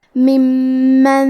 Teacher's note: کلمت ممن میں میم پہ تشدید ہے لہذا ہم یہ حرف کو 2 حرف کے برابر پڑھیں گے کیونکہ تشدید کی اصلیت 2 حرف ہے.